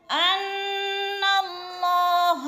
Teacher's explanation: غنہ کرنا ہے، ناک میں آواز لے جانی ہے اور نون کو ذرا جما کے پڑھنا ہے سختی سے